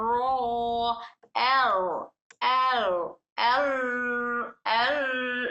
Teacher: रॉ को ना बिल्कुल हम होल्ड करेंगे। ना ही बिल्कुल हम इसको कंटिन्यू करेंगे बल्कि दरमियान में दरमियाना अदा करेंगे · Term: तवसुत